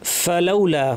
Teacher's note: ফা যেন স্পষ্ট হয়, প্রচুর আওয়াজ, প্রচুর বাতাস, ফ্যাস ফ্যাসে আওয়াজ।